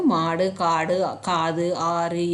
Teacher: உகரம் வந்து தன்னுடைய ஒரு மாத்திரை அளவிலிருந்து குறைந்து அரை மாத்திரையாக ஒலித்தால் அது குற்றிய லுகரம் எனப்படும் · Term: குற்றியல் உகரம்